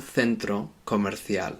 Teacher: most people in Spain, they pronounce C's like this, C-E and C-I, like a th